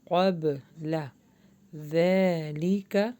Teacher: با کے اوپر جزم میں قلقلہ ہو رہا